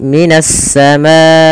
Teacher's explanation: alif lamnya diidgamkan ke huruf sin maka menjadi minasamaai kemudian pada lafal assamaai di sini ada bacaan mad wajib muttasil yaitu bacaan mad yang terjadi disebabkan karena adanya hamzah yang terletak setelah huruf mad. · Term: idgam syamsiyah